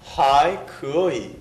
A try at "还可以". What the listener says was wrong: 좋습니다. 다시 한번.